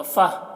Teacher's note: और यहाँ पर तो है वक्फ़ मुतलक की अलामत, यहाँ पर वक्फ़ करेंगे तो ये गोलता हाय साकिना बन जाएगी, तो फ़ह हो जाएगा। फ़ह, फ़तिन नहीं पढ़ेंगे, फ़ह।